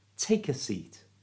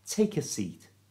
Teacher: So it's take a, and the k, the k sound, at the end of take joins into it, so it becomes taker